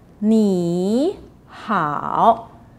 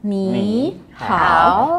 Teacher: These two words are both on the third tone.